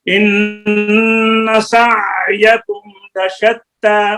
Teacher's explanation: وسط حلق حلق کا درمیانی حصہ. آگے اقصی اور ادنا کے درمیان والا حصہ. اس سے 2 حروف نکلتے ہیں عین اور ہا.